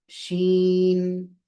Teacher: इजरा होना चाहिए शीन शीन नहीं और शीन ये भी नहीं बहुत ज्यादा भी नहीं खींचना चाहिए शीन ये भी गलत है थोड़ा सा शीन बस इतना काफी है